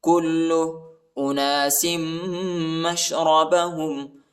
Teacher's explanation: کاف کو لام کے ساتھ ملائیں گے، لام کو سختی کے ساتھ شدت کے ساتھ پڑھنا ہے